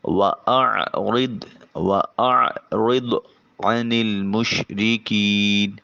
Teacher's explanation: وَأَعْرِضْ، عین پہ عین کی آواز کو حلق سے نکالیں گے، را کے نیچے زیر ہے بریک ادا کریں گے۔ ضاد حرف مستعلیہ ہے، آواز موٹا اور پر ہو کر منہ بھر کر آواز نکلے گی۔ وَأَعْرِضْ عَنِ الْمُشْرِكِينَ، عین کو وسط حلق سے نکالیے۔